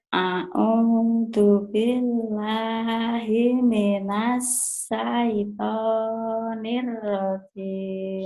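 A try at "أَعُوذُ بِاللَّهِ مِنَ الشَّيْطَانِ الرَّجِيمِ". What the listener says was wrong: Shinnya gede ya. A'udzu billahi minash gitu, shin. A'udzu billahi minash.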